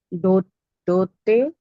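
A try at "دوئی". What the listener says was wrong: ते नहीं है वहां पे। दु- दुई दुई मता। वहां पे ये जो अगर ऊपर आप देख रहे हो, दिस इज हमजा, इसकी कोई साउंड नहीं होती है। तो साउंड आपकी दाल की, वाव की और छोटी ये की आएगी। तो यहाँ पे जो वाव है वो ऊ की साउंड दे रहा है।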